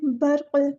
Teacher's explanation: रा जो है पुर पढ़ा जाएगा, क़ाफ़ को साकिन कर देंगे तो यहाँ पे कलकला होगा।